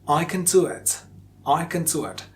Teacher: Can with schwa after k, and kin without a schwa in it. Schwa means a sound, so k, in, or k, in. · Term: Weak forms